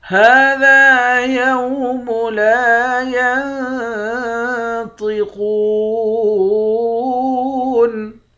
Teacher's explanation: نون پر اخفا کریں گے، طا اور قاف کو موٹا پڑھیں گے، واو کے ساتھ ملا کر ایک الف کی مقدار کھینچیں گے، آخر میں نون ساکن ہے۔